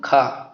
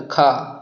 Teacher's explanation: तो ये हो गया महाप्राण, इनको बोलने में अधिक प्राण वायु निकले।